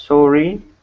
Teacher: If someone pronounces sorry as sorry with a strong emphasis on both syllables, then that is bad news.